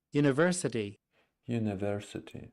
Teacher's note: yes it's the University it's a flap flap T